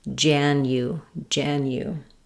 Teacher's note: In January, there is a hidden Y sound before the U